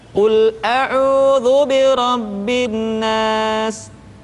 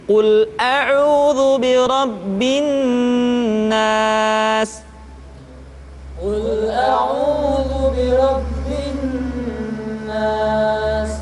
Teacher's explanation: qul auzubirabbinas qul auzubirabbinas [Musik] tidak boleh dibaca qul auzubirabbinnas tetapi ditahan suaranya ketika mengucapkan nun tasydid